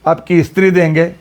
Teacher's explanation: ಉತ್ತರ ಪ್ರದೇಶದವರಿಗೆ ಸ್ತ್ರೀ ಉಚ್ಚಾರಣೆ ಮಾಡಲಿಕ್ಕೆ ಬರೋದಿಲ್ಲ ಸಂಯುಕ್ತ ವ್ಯಂಜನ ಉಚ್ಚಾರಣೆ ಮಾಡಲಿಕ್ಕೆ ಬರುದಿಲ್ಲ